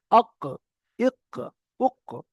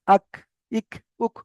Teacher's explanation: এটা মানে একটু বাইরের দিক থেকে। কফটা যেমন ভিতরের দিক থেকে পুরো জীবের গোড়া থেকে আসছে, আর কাফটা একটু বাইরে হয়।